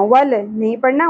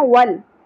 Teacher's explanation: لام ساکن پہ قلقلہ نہیں کرنا